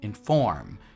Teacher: the way you pronounce it is you put the stress on the second syllable. So it's inform, not inform, right?